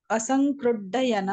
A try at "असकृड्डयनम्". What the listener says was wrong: No, there is no Anuswara. Asakrit. Asakrit. Asakrit plus dayan. 2 plus d. Asakrit dayanam.